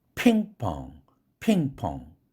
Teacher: 탁구 핑에서 액센트가 있으니까 P가 strong이고 펑 이건 약하죠.